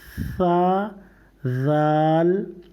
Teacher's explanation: सा बोलने में दांत और जबान के नीचे से हल्की सी हवा निकलेगी